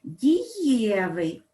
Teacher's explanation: наголос у нас падає на основу